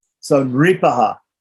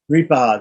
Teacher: this is a vocalic R, a vowel R, ri